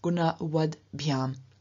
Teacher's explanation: But in the instrumental dative ablative dual, first of all, we have the weak rather than the strong stem, so gunavat. But in front of biham, the ending, which begins with a voiced consonant, we then have the T, which is unvoiced, also becoming voiced, so changing into a D. And therefore we have gunavad biham.